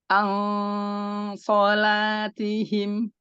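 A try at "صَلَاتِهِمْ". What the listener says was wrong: Enggak, ini kayak mirip idhar, Bu. An salatihim ikhfa. Karena kamu fokus sama ikhfa, lupa ain. Jadi an salatihim. Langsung dari ain ke suara ikhfa.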